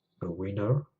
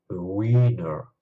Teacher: j'ai prononcé le i plus longtemps dans le second cas que dans le premier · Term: longueur